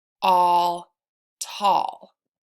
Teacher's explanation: al where the L is silent and the a says ah